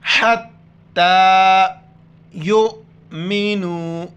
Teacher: یا کو حمزہ کے ساتھ ملائیں گے جھٹکے کے ساتھ. یا حمزہ پہ یو، میم زیر میں، نو و پیش نو. · ہا کو گلے سے ادا کر کے تا کے ساتھ ملائیں گے. تا پر کھڑا زبر ہے، کھینچیں گے. حَتَّى يُؤْمِنُوا.